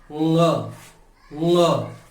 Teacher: हमारी जीभ का जो पिछला हिस्सा है ये ऊपर की तरफ, जहां पर नासिका द्वार है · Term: नासिक्य